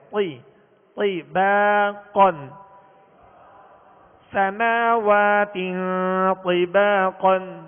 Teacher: تو کو پر بھی پڑھیں گے اور ہونٹوں کو گول کیے بغیر اسے پر کرنا ہے